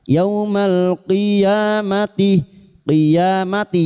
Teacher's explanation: lam takrif yang bertemu qof idhar qamariah